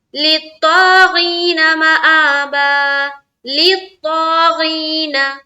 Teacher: ता भी मोटे हर्फ में से है, इसको मुंह भर कर बोलेंगे